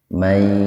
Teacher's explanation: nun mati ketemu dengan ya, membacanya itu diidghamkan dengan mendengung, dimasukkan ya, diidghamkan itu dimasukkan, jadi nunnya dimasukkan ke huruf ya dengan mendengung. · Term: idgham bigunnah